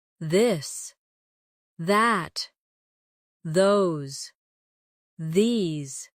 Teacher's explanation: your tongue touch your teeth lightly, but use your voice